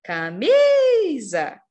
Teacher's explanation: Em camisa, a gente tem o acento tônico na sílaba mi